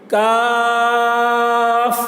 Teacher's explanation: کاف، دیکھیے یہ والی کاف کو بھی زیادہ کھینچیں گے لیکن اس کی آواز پتلی ہوتی ہے. کاف آخر میں ہوا نکل رہی ہے